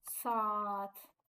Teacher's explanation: A-nın biri düşür, digəri uzun tələffüz olunur. Saat sözündə A-nın biri düşdü, digəri uzun tələffüz olunacaq.